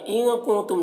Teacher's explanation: نون کی آواز کو ناک میں چھپا کر ایک الف کی مقدار کھینچ کر پڑھیں گے. کنتم کے نون میں بھی اخفا ہو رہا ہے.